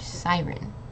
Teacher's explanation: we're emphasizing on the first syllable